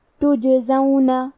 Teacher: حرف الجیم پہ جزم ہے تو ہمیں جیم کو قلقلہ سے پڑھنا ہے۔ قلقلہ کا معنی ہے حرف ساکن کو ہلانا تو ہم حرف الجیم کو ہلاتے ہوئے یہ کلمہ کو پڑھیں گے۔